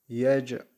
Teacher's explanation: Elem yec al cim harfi cezimli geldi. Burada kalkale var.